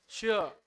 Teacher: तालु से बोलो आप श। जीभ को कहा ले जाओ? तालु के ऊपर श। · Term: तालव्य